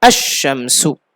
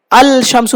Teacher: লামটা শিনের মধ্যে ইদগাম হয়ে গেছে